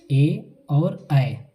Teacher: कंठ और तालु बोले तो जीभ, ये दोनों का प्रयोग एक साथ होता है। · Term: कंठ तालव्य